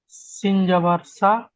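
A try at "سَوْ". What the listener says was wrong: সিন যাবার নয়, ওয়াওয়ের উপরে, সিনের পরে ওয়াওয়ের উপরে সাকিন এসছে, তাহলে যখন সাকিন আল অক্ষরকে তার আগের অক্ষরের সাথে মিলিয়ে পড়তে হয়, সেই জন্য সিন ওয়াও জাবার সাউ, সিন ওয়াও জাবার সাউ।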